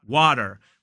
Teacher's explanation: the Americans will use more of a flap T, which is more like water